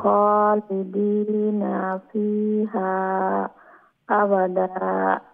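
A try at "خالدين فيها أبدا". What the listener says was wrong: জি।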